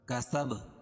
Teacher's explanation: یہاں قلقلہ ہوگا کیونکہ وقفہ کی حالت میں با کے اوپر جزم آ جائے گی، اور با یہ حروف قلقلہ کے 5 حرفوں میں سے ہے.